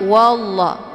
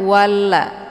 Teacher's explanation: Kemudian wallah, ini juga lafaz Allah yang dibaca tebal, yaitu wallah karena sebelum lafaz Allah berharokat fathah yaitu wa. Jadi dibacanya wallah bukan walla, tapi ditebalkan, yaitu bacaan tafkhim wallah. Dan untuk la-nya dibaca panjang 2 harokat karena ada harokat fathah tegak di atas huruf la, dinamakan dengan mad tabi'i muqaddar.